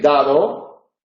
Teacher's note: Mientras que en dado, la segunda D, la lengua queda separada